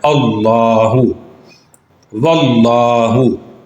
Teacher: لام سے پہلے حمزہ ہے اور اس کے اوپر زبر ہے، اس لیے اس لام کو ہم نے موٹا ادا کرنا ہے